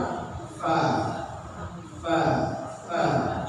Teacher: gigi atas bertemu dengan bibir bawah.